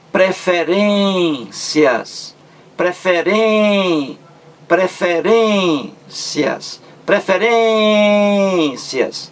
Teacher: A sílaba mais forte é R-E-N. Ren é a sílaba mais forte. Então aí, penúltima sílaba. · Palavra paroxítona. A sílaba mais forte é a penúltima.